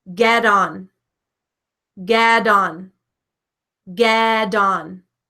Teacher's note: So when a T comes in between two vowel sounds, you are definitely going to hear it pronounced like a D in American English. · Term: T sounding like a D